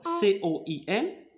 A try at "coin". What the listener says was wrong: Coin. Très bien.